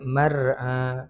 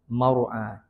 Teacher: Ra mati sebelumnya bagi atas, maka kena baca dengan tebal. Mar'a, tafkhim.